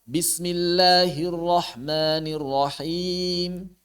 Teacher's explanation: ketika kita wakaf Mad bertemu sukun Arid saat wakaf maka dibacanya dua harakat aja enggak boleh lebih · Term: qasar